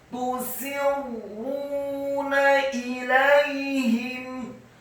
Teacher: Kata tusirruna ilaihim, tusirruna, ta-nya dibaca dhammah 1 harokat, kemudian sinnya dibaca kasrah 1 harokat. Selanjutnya ada huruf ra yang tasydid, dibaca tafkhim tebal dan isti'la bergetar, dhammah 2 harokat karena setelahnya ada wawu sukun. Kemudian nunnya dibaca tipis, fathah cukup 1 harokat.